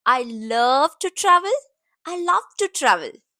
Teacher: Now, coming to sentence stress. I love to travel. Stress on love and travel.